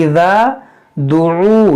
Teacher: यहाँ पर देखें इज़ा दुऊ, ये आइन है, यहाँ पर जो मद है ये वाव मद्दा है, वाव मद्दा के बाद हमजा दूसरे कलमे में है, तो यहाँ पर मद्दे मुनफसिल होगा